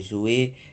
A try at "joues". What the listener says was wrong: Les joues, c'est pas jouer. Les joues pourpres.